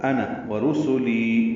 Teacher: ورسولی یعنی پڑھا نون پڑھنا ہے اس کو، انا ورسولی، واو ہونٹوں کی نا تمام گلائی سے ادا کریں گے